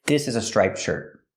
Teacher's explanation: When I put it together with a consonant, shirt, you don't really hear the T. It's a stop T. Link the sounds.